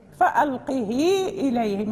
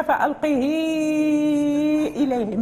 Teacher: ست حركات المد المنفصل